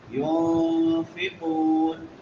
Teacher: نون ساکن ہے اور بعد میں حروف اخفاء میں سے فا ہے تو یہاں پہ اخفاء کریں گے. ينفقون قاف موٹے حروف میں سے اور واو مدہ ہے.